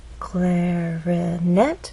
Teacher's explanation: clarinet has three syllables clarinet but it's the final syllable that is stressed and there's a pause right after which means there's nothing following